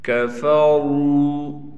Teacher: را کو موٹا بھی کریں گے اور را کے بعد واو ہے، واو پر ساکن بھی ہے، لہٰذا اس را کو ایک الف کی مقدار کھینچیں گے